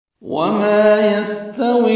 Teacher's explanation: یستوی سین ساکن پہ ہمس ہے، باریک پڑھا جائے گا، تا بھی باریک ہے، وی یا مدہ ہے، لیکن الاعمى کا حمزہ وصلی ہونے کی وجہ سے واو کو الاعمى کے لام سے ملا دیا تو یستویل ہو گیا۔